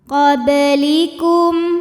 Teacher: Karena huruf qalqalahnya sukunnya asli dan ada di tengah bacaan, maka dibaca dipantulkan dengan pantulan yang kecil. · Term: qalqalah sugro